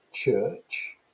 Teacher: And even more difficult for children to articulate are these affricate phonemes, because you've got ch, as in the word church, So church has got two affricate palatal sounds. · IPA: tʃ